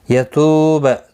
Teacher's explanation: تو واو مدہ ہے، ایک الف کی مقدار کے برابر کھینچ کر پڑھیں گے